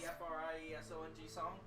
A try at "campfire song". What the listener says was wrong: You said F-R-I.